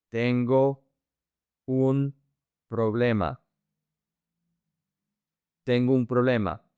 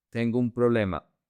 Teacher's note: You connect the O and the U.